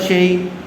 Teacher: یا ساکن سے پہلے زبر آیا ہوا ہے، اس لیے لین کا قاعدہ ہوگا. اس کو نرمی کے ساتھ جلد ادا کریں گے.